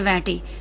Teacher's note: સાનુનાસિક ઈ હોય તો એનો એ થઈ જાય છે